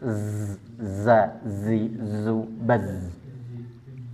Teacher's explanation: Kalau huruf zai ini seperti suara tawon ya. Atau saofir ini ada suara berdesis. Kenapa? Karena keluar pada ruang yang sempit. · jangan keluar nafas karena tidak bersifat hames. Dia jahr. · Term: sofir